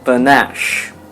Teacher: the stress is on the second syllable which means the second syllable would sound louder than the first one · We have the consonant sound p, then the negligible sound shua, then the consonant sound n. After that we have the vowel sound a, and lastly sh.